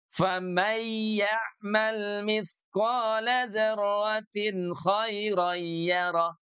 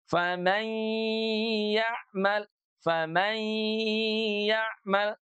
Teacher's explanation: Adalah sifat gunnah, ya kan? Maka jadinya faman selain masuk ke rongga hidung, dia juga harus ditahan bunyinya.